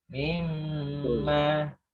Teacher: Mim tasdidnya gunah ditahan.